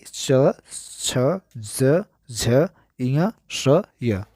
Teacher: तालव्य व्यंजन में जिनके उच्चारण में जीभ के पिछले भाग को तालु से संघर्ष करना पड़ता है।